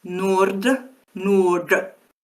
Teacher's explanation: all those dental and alvola consonants after an R are changed to retroflex. So the word for north spelled N O R D. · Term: retroflex D